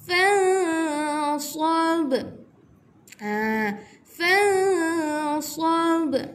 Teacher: Nun mati bertemu huruf sad. Ihfa hakiki. Cara bacaannya tidak jelas ataupun samar-samar.